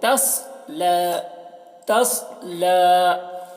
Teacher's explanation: सौद को पूर्ण पढ़ना है और सौद में कलकला ना होने पाए, इसका ख्याल रखना है